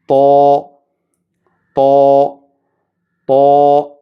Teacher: ഇസ്തിഅ്ലാ എന്നാൽ നാവ് അണ്ണാക്കിലേക്ക് ഉയർന്നിരിക്കുകയും അതുപോലെ ഇത്ബാഖ് എന്ന നാവിൻ്റെ നടുഭാഗം മേൽപോട്ട് അണ്ണാക്കിലേക്ക് ഉയർന്നിരിക്കുകയും ചെയ്യുന്ന ശൈലിയിലാണ് തോ ഉച്ചരിക്കേണ്ടത്. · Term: ഇസ്തിഅ്ലാ ഇത്ബാഖ്